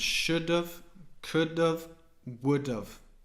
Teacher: we're kind of taking away the H and the A and we're just pronouncing the of should do uh if you